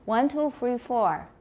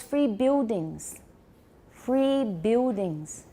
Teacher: they don't stick out their tongue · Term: estuary english